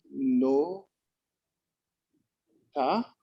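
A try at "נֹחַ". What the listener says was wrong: Noach. Le chet ici, ça fait ch. Noach.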